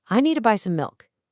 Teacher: Need and milk are the big strong beats. And that little phrase to buy some just gets sped right over.